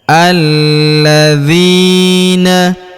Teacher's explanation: huruf la kita tahan dan kita tekan karena terdapat tanda tasdid di atasnya yang ini. Alladzina huruf dzi kita panjangkan dua harakat karena ya sukun di depannya.